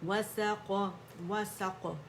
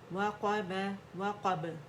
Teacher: قاف کا موٹا ہے، باقی با جیم دال جو ہے باریک ہے تو ان کو باریکی سے ادا کریں گے، ٹھیک ہے. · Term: قلقلے